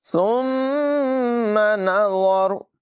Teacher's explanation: سا کو بغیر سیٹی کے پڑھیں گے